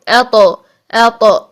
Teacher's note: हमने कहा था पहले आवाज को लॉक करें और फिर सांस को जारी कर दें, ठीक। लेकिन तौ के लिए आवाज में कलकला होता है, सांस बंद हो जाता है